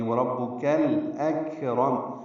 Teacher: لام ساکن پہ اظہار ہے، کاف ساکن ہے، اس پہ ہمس ہے، اک را پر ہے اور میم ساکن پہ اظہار شفوی ہے.